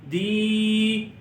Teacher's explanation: کے نیچے ہے زیر اور اس کے بعد ہے یا ساکن، یا ساکن سے پہلے زیر آ گئی تو یہاں پر ایک الف جتنا لمبا کریں گے